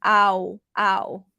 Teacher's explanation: It's actually A and then oo at the end, like your mouth is rounded.